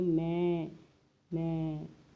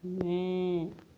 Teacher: अनुस्वार जैसी नहीं, आवाज़ तो मुंह और नाक दोनों से आ रही है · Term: अनुनासिक